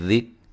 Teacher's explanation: ہے باریک، من، یہاں بھی نون ساکن کا اخفا باریک، ذک، کاف کو باریک پڑھیں گے، ہلانا نہیں ہے